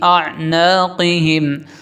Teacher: قاف حروف مستعلیہ میں سے موٹا پڑھنا ہے